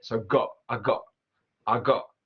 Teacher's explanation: So with got, she's using the glottal T. She's not saying it.